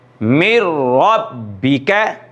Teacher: तो इसमें हम मीम को डायरेक्ट रा के साथ मिलाएंगे और नून जो है वो रा के अंदर छुप जाएगा।